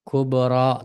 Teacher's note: Kubra madagi ba harfini qalqala o'qiymiz.